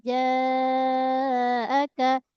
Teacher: So pada jim tengah lidah dengan langit tengah. Jaaka dibaca dengan empat ataupun lima sama dengan atas tadi.